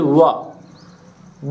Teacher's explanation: व दांत और ओठ मिला के बोलते हैं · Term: दंतोष्ठ